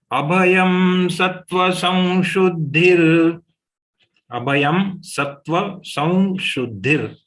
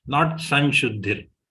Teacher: Slight flavor of va has to be there when we take the anuswar of sa. Samshuddhir, not Sanshuddhir.